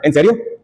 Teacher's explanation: tono agudo para expresar sorpresa